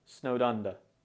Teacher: the D in snowed is often pronounced very subtly so it will sound a bit like snowed under so it